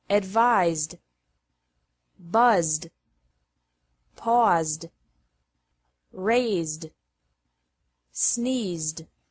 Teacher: Ed is pronounced like d after verbs ending with a z sound